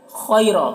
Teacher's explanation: خا کو پر پڑھیں گے، یہ حروف مستعلیہ میں سے ہے۔ اور یہاں پر یا لین ہے، یا لین کو نرم آواز کے ساتھ جلد پڑھنا ہے۔